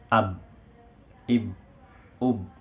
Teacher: Ketika disukunkan ya, huruf ba ini suaranya tidak berjalan, tertahan. Ab, ib, ub ya, karena huruf ba ini adalah huruf syiddah, huruf yang kuat.